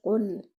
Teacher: Just make your qaf heavy without air and join it with the lam and give your lam moderate timing. Do not bounce it.